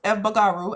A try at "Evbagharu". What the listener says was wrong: The B silent. The B is silent. So it's Evbagharu. Evbagharu. So the B is what throws everybody off.